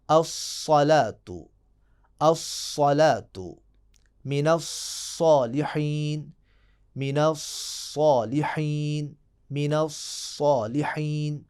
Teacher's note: لیکن یاد رہے کہ ان 3 میں سے حرف صاد کو موٹا پڑھیں گے اور باقی 2 حروف کو باریک پڑھیں گے۔ صاد میں صفت استعلا پائی جاتی ہے، اس کی وجہ سے صاد کہتا ہے کہ مجھے موٹا پڑھا جائے